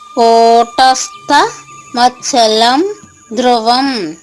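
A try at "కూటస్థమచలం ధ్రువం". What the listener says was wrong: మచ్చలన్ bracket లో పొల్లునా పెట్టారు, అదే పలకాలండి, సున్నా పలకూడదు. సున్నా పలకూడదు. మచ్చలన్.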